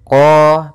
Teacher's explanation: makhraj daripada huruf qaf yaitu dari pangkal lidah kita, pangkal lidah, sehingga huruf qafnya harus dibaca dari pangkalnya supaya lebih jelas, pangkal lidah kita. · Maka lafal qa-nya lidah pangkal lidah kata terangkat, qa, kemudian tidak dimonyongkan bibirnya, tapi dibuka saja untuk menyempurnakan daripada fathah huruf qah-nya. Kemudian huruf qaf kita panjangkan 2 harakat, di sini ada fathah bertemu alif, maka dinamakan dengan mad tabi'i, panjangnya 2 harakat. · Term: isti'la